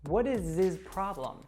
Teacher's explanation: So we have the American T there happening because the T falls between wa and is, so it becomes what is, and then the S, or actually that Z sound from is, connects to the pronoun.